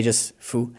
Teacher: fu is a neutral tone